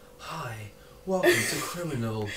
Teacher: It's really breathy, like I'm on a sex phone line or something. So borderline ASMR-ish.